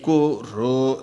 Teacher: both are separate syllables, one upper swara, one lower swara, but both are hrasvam.